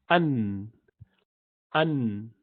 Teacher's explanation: Hard palate again, An. And Noon has half of its sound coming from the nostril. So An, you continue to move it, so the nasal passage would continue to be part of this pronunciation. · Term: nasalization